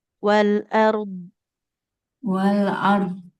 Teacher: Nggak boleh dipantulkan di ujungnya.